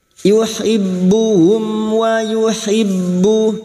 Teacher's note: Mim sukun bertemu waw, idhar safawi. Mim sukun dibaca jelas tanpa mendengung.